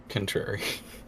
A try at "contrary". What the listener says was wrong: would almost always pronounce it contrary. I think it's just it's a difference in the syllable that we're emphasizing, but it makes a weirdly big difference. Contrary.